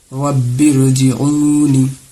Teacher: یہاں پہ را ساکن سے پہلے زیر دوسرے کلمے میں ہے، اسی لیے را کو پر کر کے پڑھیں گے.